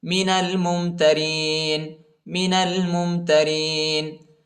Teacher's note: نون کو لام کے ساتھ ملائیں گے، الف نہیں پڑھا جاتا، الف پر حرکت نہیں ہے